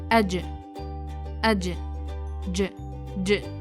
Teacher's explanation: It comes by touching the middle of the tongue with the roof of the mouth. It makes short strong echo sound.